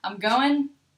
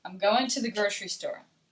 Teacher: if I'm in Texas, I'm going to say, I'm going, and you're not going to really hear that G.